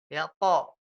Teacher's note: Huruf po itu juga tebal karena pangkalnya naik.